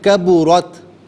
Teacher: کبورت میں را کو پر کر کے پڑھیں گے، تا کو ساکن پڑھیں گے